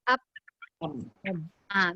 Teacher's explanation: Bila kita mati up, suara tak keluar dah. Dari segi udara pun tak keluar dah.